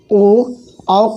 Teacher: औ का उच्चारण स्थान कंठ ओष्ठ है